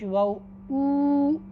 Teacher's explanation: वाव मद्दा मुंह के खाली हिस्से से अदा होता है